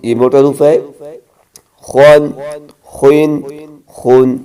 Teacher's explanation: خا حلق کے اوپر وہی سے ادا کریں،